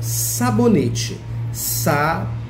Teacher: Então, o NE é a sílaba mais forte de sabonete.